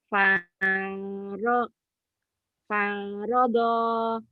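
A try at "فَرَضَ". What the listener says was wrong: Nggak ada yang panjang Bu, panjang pertama doang.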